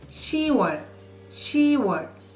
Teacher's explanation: you drop B as the last consonant